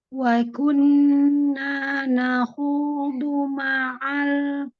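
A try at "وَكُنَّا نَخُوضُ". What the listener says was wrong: Nah, dunya diperbaiki, dunya pendek. Nanya mad, lagi nanya mad ya. Nun tasdidnya aku nanya mad, panjangin.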